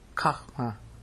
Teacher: I put a little English on the H. So it sounds like a KH.